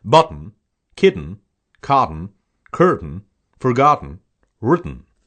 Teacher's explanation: T is held when the word ends with tain tten and in some TN combinations